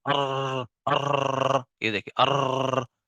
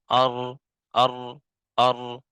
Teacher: ہماری زبان جو ہے وہ ایک کپ کپی سی تاری ہو گئی ہے، وہ بار بار جو ہے وہ لگ رہی ہے، ہٹ رہی ہے، لگ رہی ہے، ہٹ رہی ہے، تو یہ تکرار ہو رہا ہے، یعنی کہ ہر دفعہ ایک نیا حرف جو ہے وہ نکل رہا ہے، جبکہ ہم تلاوت کرتے وقت ایک حرف کو ہم نے پڑھنا ہے، ٹھیک ہے۔